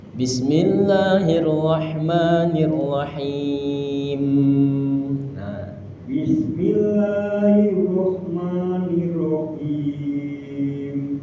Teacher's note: Jadi di setiap akhir itu agak didengungkan karena huruf nun dan mim.